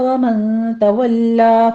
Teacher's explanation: ومن تولا میں نون ساکن کا قاعدہ اخفا کی ہے، 2 کاؤنٹ کر لیں گے، اور تولا نہیں پڑھنا ہے، اس کو تولا ہے، فتح قائمہ ہے اوپر، تشدید کے ساتھ آپ فتح قائمہ ادا کیجئے، 2 کاؤنٹ کرنا ہے۔